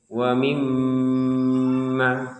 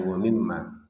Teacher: Ada tasydid di sini. Tasydid ini di atasnya mim sebagai fungsi bahwa harus didengungkan. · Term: dengungan